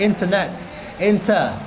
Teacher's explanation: If you say British, perhaps you can say internet, inter, not R